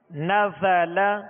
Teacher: زا کے اندر سیٹی کی آواز ہے، اس میں سختی ہے، تو اس کے اندر سختی اور سیٹی کی آواز جو ہے یہ اس کی خوبی ہے.